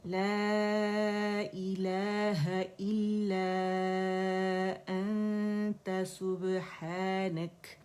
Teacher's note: لا جو ہے باریک دائرے سے 4 کاؤنٹس ہم کھینچیں گے، ٹھیک ہے؟ ابھی میں تھوڑا سا میں آپ کو بتا دوں کیونکہ کھینچنے کا یہاں کافی مسئلہ ہوتا ہے۔ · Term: مد منفصل